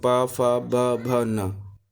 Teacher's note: पा वर्ग का उच्चारण ओष्ठ से होता है